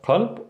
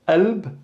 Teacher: the qalb, for example, could be pronounced as qalb or alb, glottal stop, alb, and we're just really stopping here, kind of like the sound in apple, but the glottal stop here comes in the middle.